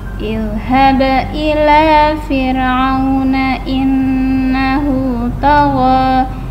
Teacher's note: Ba sukun memantul, ada nun tasydid dibaca mendengung.